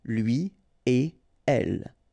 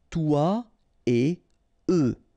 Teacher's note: So after this conjonction et, like we've got here, you don't make any liaison. So no links after et. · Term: no liaison